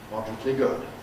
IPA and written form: ˈmɒdrətli ˈgʊd (moderately good)